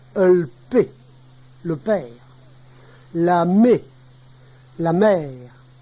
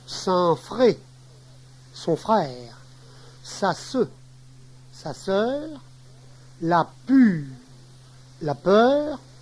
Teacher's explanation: Le R final. Il disparaît le plus souvent.